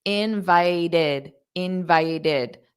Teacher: Invited is a verb. The stress is on the second syllable.